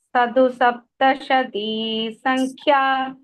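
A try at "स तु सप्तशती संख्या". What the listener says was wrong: Sadu no. tha first tha.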